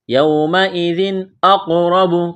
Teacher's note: یومئذ اقرب قلقلہ کریں گے قاف پر، موٹا کرنا ہے قاف کو